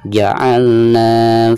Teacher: karena ada harkat patah lalu berhadapan dengan Alif Jadi dibacanya dua harokat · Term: Mad Thobi'i